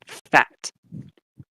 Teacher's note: with labiodental it combines your bottom lip with your top teeth so you get something like the f in fat fat so